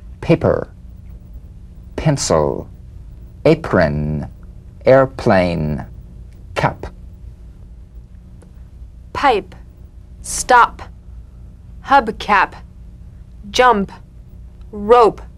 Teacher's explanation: p is played with a light springing apart of the lips just like for the bee · The whispered tap of this drumbeat P is played with a light springing apart of the lips, just like for the B. On the springing away, feel a B in a whisper without any puff of air. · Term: unvoiced labial stop consonant